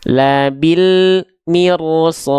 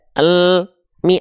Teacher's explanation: Antara bunyi konsonan l dengan mi tidak boleh ada jeda hening. Ya, labil mirsad, enggak labil mi.